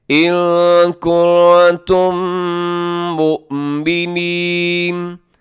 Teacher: دونوں میم مل کے ایک ہو جائیں گے اور ساتھ آواز کو ناک میں بھی لے جائیے گا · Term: ادغام میں شفوی